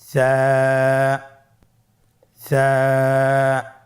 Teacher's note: স্ক্রিনে দেখা যাচ্ছে। সা হরফটির মাখরাজ হলো উচ্চারণের স্থান জিহ্বার আগা সামনের উপরের 2 দাঁতের আগার সঙ্গে লাগিয়ে উচ্চারিত হয়।